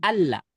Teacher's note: Nah, kadang nih gara-gara ada nun ini nih seakan-akan dia dibacanya kayak harus ditahan gitu loh. Nun ini udah enggak aktif sama sekali. Jadi kalau nun dibuang langsung alla lam tasdid itu sama aja.